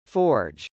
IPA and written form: fˈɔːrdʒ (forge)